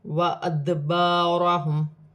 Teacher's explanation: را پر زبر کی حرکت ہے، را موٹی پڑی جائے گی · میم ساکن میں غنہ نہیں ہوگا۔ دال حروف قلقلہ میں سے ہے، ساکن ہے، قلقلہ کے ساتھ ادا کیا جائے گا